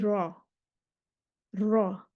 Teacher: इन हरूफ को अदा करते वक्त आवाज़ में ना तो शदीदा की तरह सख्ती होती है और ना ही रिख़वा की तरह नरमी होती है, बल्कि दरमियानी हालत होती है। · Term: मुतवस्सिता